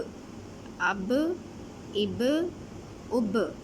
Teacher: اب یہ جو ب کی آواز ہے یہ حروف کلکلہ ہے، اس لیے اس کی آواز جو ہے وہ دوبارہ سے واپس آ رہی ہے، باؤنسنگ ساؤنڈ اس کو ہم کہہ سکتے ہیں۔